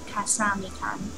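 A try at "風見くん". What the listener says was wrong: Kun. You said Kan. There's no A there.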